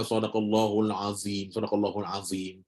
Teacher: dia sama macam huruf Zal cuma dia kena angkat lidah belakang sempitkan makhraj untuk tebalkan huruf ni